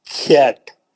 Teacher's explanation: آپ دیکھیے, کو کو کو کوٹ. اور کیٹ بولے تو پورا منہ پھیل گیا, حرف پتلا ہو گیا, ساؤنڈ گر گیا, ہے نا, نرم ہو گیا آواز.